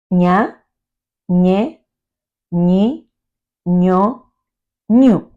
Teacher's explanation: The sound ñ in Spanish is similar to the direct syllable ni. It is produced by lifting and pressing the tongue against the center of the palate